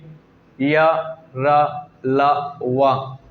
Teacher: क्योंकि जब इन्हें उच्चारण करते हैं, जब इन वर्गों का उच्चारण करते हैं तो अंदर से वायु निकलती है, मुख से वायु निकलती है और इन्हें बोलते समय, इनका उच्चारण करते समय जीभ किसी भी भाग को टच नहीं करती है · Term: अंतःस्थ व्यंजन